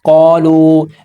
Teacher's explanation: الف سے پہلے زبر ہے، الف حروف مدہ ہے، زبر کو 2 حرکات کے برابر کھینچیں گے